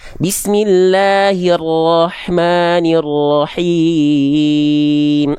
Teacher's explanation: Huruf ro itu menuntutnya nggak banyak getaran kok. Dia sedikit tapi tetap tegas, lugas dan jelas.